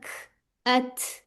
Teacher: काफ में हमस होता है काफ में सांस की आवाज आती है